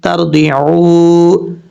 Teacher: را ساکن سے پہلے زبر ہے، پر پڑھیں گے، عین کے بعد واو مدہ ہے، ایک الف کی مقدار لمبا کریں گے، بلکہ یہاں پہ مد منفصل ہے، 2.5 سے 3 الف کے برابر آپ اس کو لمبا کر سکتے ہیں۔